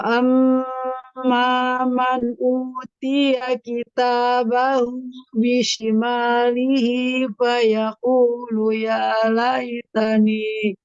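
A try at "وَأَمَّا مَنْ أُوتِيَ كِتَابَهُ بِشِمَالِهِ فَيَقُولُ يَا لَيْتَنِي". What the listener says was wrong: Iya, dhammah ya atau di sini afwan wa amma man nah dhammah di sini u-nya utiya. Nah, jangan terbawa jadi utiya. Nah, dhammahnya sempurnakan afwan.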